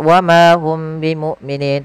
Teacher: suara mimnya ditahan, jangan langsung dilepas, wa ma hum bimu'minin, tapi tahan. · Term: ikhfa syafawi